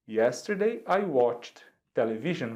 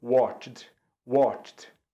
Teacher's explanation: a gente vai falar como se fosse um T, esse D